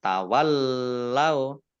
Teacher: lamnya dibaca double, ada tasdidnya